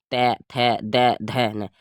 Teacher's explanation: दंत से, दंत पे लगेगी जीभ